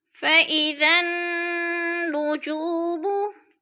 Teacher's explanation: ذال کو نون کے ساتھ ملا کر پڑھیں گے کیونکہ ذال کے آگے جو 2 الف ہیں یعنی دونوں خالی ہیں، اوپر نیچے کوئی حرکت نہیں ہے ان کے اوپر، تو ہم نے ذال کو نون کے ساتھ ملا کر ادغام کرنا ہے، سختی سے جمع کر پڑھنا ہے۔